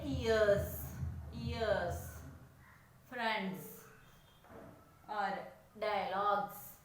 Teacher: Our vocal cord do not vibrate. And when you say ears, friends, or dialogues, you can feel that your vocal cord is vibrating